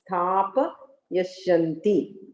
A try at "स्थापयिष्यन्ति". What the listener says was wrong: Sthapayishyanti. Yeah, yakara has E.